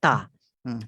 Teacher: Ta ada sifat hamas, ada dia punya hembusan dia bila sebut ta. Tapi la ifrat wala tafrit, dia tidak berlebihan, terlalu berlebihan dan tidak terlalu kurang.